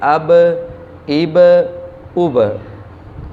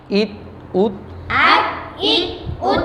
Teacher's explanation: آواز پلٹ کر آتی ہے، جنبش پیدا ہوتی ہے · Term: قلقلہ